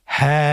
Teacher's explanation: হারফটি উচ্চারণ ক্ষেত্রে অবশ্যই বারিক হবে এবং এক আলিফ টেনে পড়তে হবে।